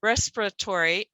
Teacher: in this word we're not even going to say the i